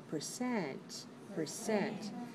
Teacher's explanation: it's two syllables please stress the second one